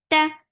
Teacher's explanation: No flow of sound in ta because ta is shidda letter.